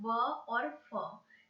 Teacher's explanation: व और फ में दंत और ओष्ठ दोनों का यूज होता है बोलने में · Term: दंतोष्ठ्य